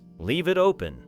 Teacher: The final V in leave connects with it, and the final T in it connects with open.